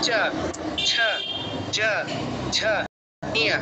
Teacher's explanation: দেখুন জিহ্বাটা যে জায়গাটায় ঘষা দিচ্ছে চ উচ্চারণ করার সময় সেটাই হচ্ছে তালু, তালব্য বর্ণ, তালু উচ্চারিত হয় বলে তালব্য বর্ণ নাম।